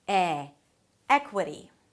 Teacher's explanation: Primary stress on the first syllable.